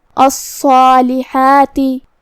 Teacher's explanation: تو جو کہ اس سے پہلے حرف الصاد ہے تو ہم صاد کو اور مد الف کو دونوں کو تفخیم سے ادا کریں گے · صاد حروف تفخیم میں سے ہے تو ہمیں اسے بھاری آواز میں منہ پھلا کے ادا کرنا ہے. جو کہ اس پہ تشدید ہے تو ہم دو حرف کے برابر صاد کو پڑھیں گے.